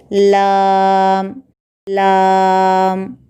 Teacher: ज़ुबान की नोक के करीबी हिस्से को ऊपर के दांतों के मसोड़ों को लगाने से लाम निकलता है